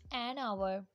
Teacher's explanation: Notice the word hour as H is silent here. Hour starts with a vowel sound. हम देख सकते हैं कि our word वोवल साउंड से start हो रहा है, इसलिए इसके साथ आ लगाने की बजाय एन लगेगा।